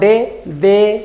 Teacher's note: se junta la lengua y el diente es un sonido dental